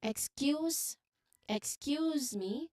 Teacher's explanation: You remember to stress the second syllable of excuse.